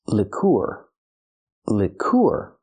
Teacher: Move the stress to the second syllable.